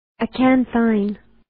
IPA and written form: ə'kænθɪn (Acanthine)